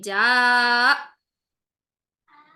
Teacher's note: जा की आवाज को ऊपर उठाएंगे और झटके से हमजा पर लाकर अक्सा हल्क में आवाज को ठक करके बंद करेंगे। आवाज सांस दोनों बंद होंगी।